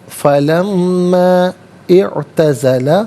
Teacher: لما میں میم پر زبر ہے، اسے اعتزلہ کی عین ساکن کے ساتھ ملائیں گے، درمیان میں سے الف نی حمزہ کو حذف کیا جائے گا۔